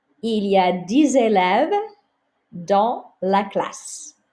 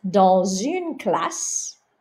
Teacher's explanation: So you don't hear the S on the end of dans.